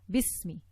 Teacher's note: we will connect the ba to the sin and not read the Hamzah al-Wasl that is in between, okay? Because the letter before it has a haraka, we don't need to read Hamzah al-Wasl, so we will connect the ba to the sin.